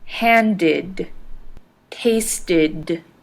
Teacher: The ed in handed and tasted ended with an id sound.